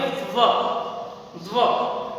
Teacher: जिसमें दांत और होठ दोनों हिलते हैं, उससे व का उच्चारण होता है दंतोष्ठ, जिसका उच्चारण करेंगे व व।